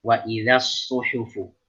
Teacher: Jadi tetap dijaga ketipisan huruf zal fathah.